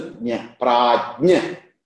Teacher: Jnya is actually ja plus nya.